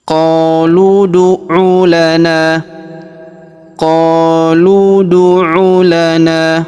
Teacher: Karena huruf lu langsung lompat ke sini langsung masuk ke sini kita pantulkan pada huruf da yang sukun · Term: qalqalahkan